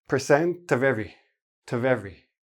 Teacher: There's the of, and the T from the percent blends into the O, the V blends into the E, and then you have it sounds like one word.